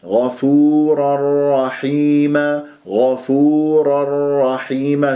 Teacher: مع راء رحيمه ادغام بغير غنه غفورا رحيما غفورا رحيم شوف كيف صارت الشده على راء رحيمه